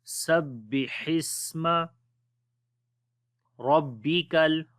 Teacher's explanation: Ra we read in heavy sound due to fatha sign on it. On the ba we make bit strong wise Rabbikal.